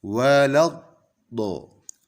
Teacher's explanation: Yang benar adalah langsung dimasukkan ke huruf do yang bertasydid sehingga bacanya langsung menebal.